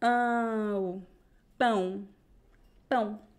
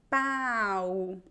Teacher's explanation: It's pão, two vowels, pão. The A is very nasal, and then the O is very close. It sounds like a weak U. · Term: nasal sound